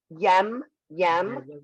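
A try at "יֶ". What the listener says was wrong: You didn't give the Y its own sound. You just made the vowel to the next guy.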